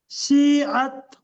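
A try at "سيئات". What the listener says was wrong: এটা শিন নয়, এটা সিন। ঠিক আছে? সিন উচ্চারণ করবে। সিআত।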